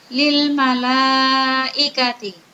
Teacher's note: lil malaikati, mat wajib muttasil, panjangnya 5 harokat. Kenapa? Karena fathah pada lam malaikati bertemu dengan hamzah dalam satu kalimat.